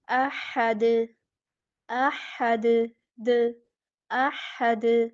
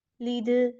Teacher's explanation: دال پہ آواز کو لوٹائیں گے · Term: قلقلہ